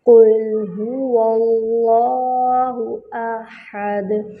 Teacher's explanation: ہاں پر ضمہ ہے، ہونٹوں کو مکمل گول کریں گے اور ہاں کا مخرج ہے اقصی الحلق